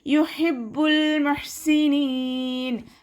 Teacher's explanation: ഹ അക്ഷരത്തിൻ്റെ സൗണ്ടിനെ തൊണ്ടയുടെ മധ്യഭാഗത്ത് തന്നെ കൊണ്ടുവരാൻ ശ്രദ്ധിക്കുക